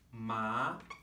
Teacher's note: For example, ma, if the pitch of my voice was flat, this means mother, right? If the pitch of my voice rises, ma, this would mean numb. If the pitch of my voice dips and comes back up, ma, ma, this means horse.